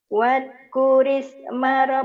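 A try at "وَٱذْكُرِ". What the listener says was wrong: wad zal bukan wad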